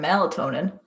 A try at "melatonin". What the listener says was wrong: sounded like a portmanteau of maladeer and melatonin. Melatonin.